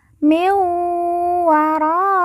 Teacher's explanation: Perhatikan, nun mati bertemu dengan huruf wawu, maka nun mati dileburkan langsung masuk huruf wawu, kemudian ditekan, ditahan 2 harokat dan didengungkan.